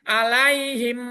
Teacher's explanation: Dengan memasukkan huruf mim mati ke dalam huruf mim setelahnya yang disertai dengan mendengung.